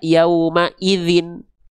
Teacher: Gak cukup dengan vokal I saja. Kalau baris bawahnya 2, gak cukup dengan vokal I saja, tapi dibaca menjadi vokal konsonan in. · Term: tanwin kasroh